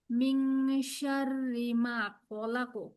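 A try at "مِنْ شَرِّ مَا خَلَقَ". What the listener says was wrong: মায়ে টান আছে আপু একাধিক।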